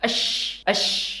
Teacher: Huruf shin itu bunyinya ash. Tengah lidah kita mendekat ke langit-langit.